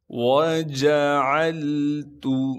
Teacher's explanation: وَجَعَلْتُ، واو کو بغیر کھینچے پڑھیں گے، جیم کو بھی بغیر کھینچے پڑھنا ہے، عین کو صاف کر کے گلے سے ادا کریں گے، عین کو آگے لام ساکن سے ملانا ہے، تا کو باریک کر کے بغیر کھینچے پڑھنا ہے۔